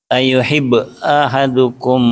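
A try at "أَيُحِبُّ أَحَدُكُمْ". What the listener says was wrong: ada bu'nya kan?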